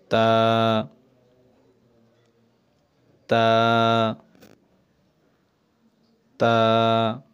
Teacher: তা বলার সময় কিন্তু আমরা এক আলিফ টেনেছি।